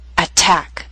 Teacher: word with two syllables stress is on the second attack so T although in the middle of the word is at the beginning of a stress syllable so we have a true t